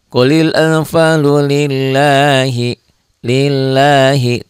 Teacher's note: ini lafaz Allahnya dibaca tipis ya tipis itu berarti tarqik